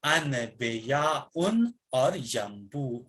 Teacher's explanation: کہتے ہیں اگر نون ساکن یا تنوین کے بعد بے، حرف بے واقع یعنی آ جائے، نون وہ نون میم سے بدل جائے گا اور اسے غنہ سے ادا کیا جائے گا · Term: قلب